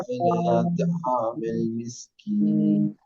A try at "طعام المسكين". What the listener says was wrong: मिस्कीन में सीन निकालिए, मुंह खोल के पढ़ना है, जोर से पढ़िए। मिस्कीन, हाँ हाँ, सीन में सीटी बजनी चाहिए।